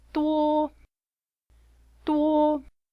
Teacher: said with a flat first tone